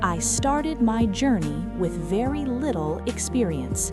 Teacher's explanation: notice the falling tone, the confidence, the certainty